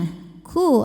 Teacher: ku ada anginnya ya dan bibir kita monyong